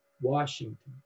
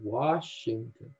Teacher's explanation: stressed and then two unstressed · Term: dactil